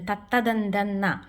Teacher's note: അടുത്തത് ദന്ത്യം, പല്ലുകൊണ്ട് പറയുന്നത് തത്തദന്തന്ന